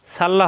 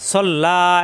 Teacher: সাল্লা হবে না সল্লা এক আলিফ টান